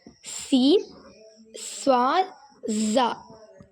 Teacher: இது நாவின் நுனிப்பகுதி முன்பற்களின் மேல் கீழ் இடையில் படும் பொழுது வெளியாகிறது